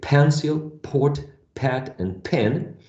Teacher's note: When you say pencil, port, pat, and pen, there is a stronger puff of air. The p is very plosive, okay?